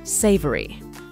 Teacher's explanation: this is a three syllable word and is stressed on the first syllable